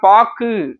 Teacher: பாக்கு கூன்னு சொல்லாம ஊன்ற ஒரு சவுண்ட்ல தான் முடியும் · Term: குற்றியல் லுகரம்